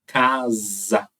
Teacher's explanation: o s da palavra casa tem som de z